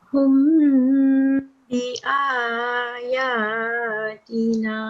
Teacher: And you will not say it humma because it doesn't have a tashdid and it doesn't have a fatha. So it's just hum. But we prolong the meme because of the ba. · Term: meme sakin